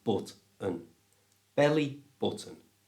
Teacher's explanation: just change the O in button to the schwa sound so it's but-un.